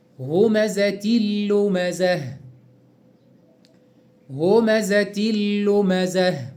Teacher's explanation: إدغام التنوين بالكسر في اللام